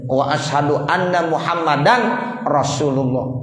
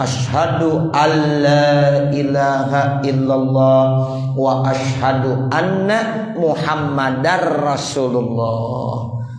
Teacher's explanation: Maka cara yang benar adalah ashadu alla ilahaillallah wa ashadu anna muhammadar rasulullah. Jadi sudah menjadi idgham bila ghunnah, sehingga bunyi nun hilang. Suara tanwin juga sudah hilang.